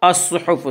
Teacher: صاد کو پر پڑھیں گے، صاد حروف مستعلیہ میں سے ہے